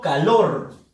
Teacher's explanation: fuerza de voz en la sílaba lor, pero hay un detalle, ya sabemos que es la última sílaba de la palabra calor, termina en R, solamente se tildaba si terminaba en N, S o vocal.